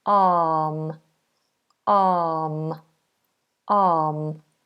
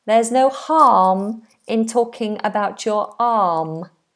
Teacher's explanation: it may have the letter r in it but we do not pronounce that we don't do R arm we do a nice open long